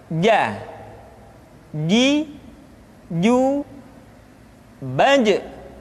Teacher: Selanjutnya adalah huruf ja. Dikeluarkan dengan menyentuhkan tengah-tengah lidah dengan langit-langit.